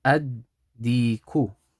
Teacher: So there's a dal after it, okay? So the lam al-shamsiyah is going to turn into a dal with a sukoon.